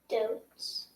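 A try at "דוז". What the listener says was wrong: Doze. No, not dotes. that would be a zadi, not a zain. Doze.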